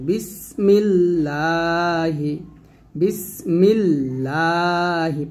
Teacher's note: আর যদি আল্লাহ শব্দের লামের ডাইনে জের থাকে, তাহলে হরফটাকে, লাম হরফটাকে পাতলা করে পড়তে হবে।